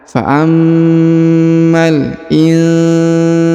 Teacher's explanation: huruf sa dipanjangkan 2 harokat karena di depannya terdapat alif